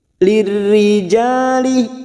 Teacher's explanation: huruf jim fathah diikuti alif, dua harokat kita panjangkan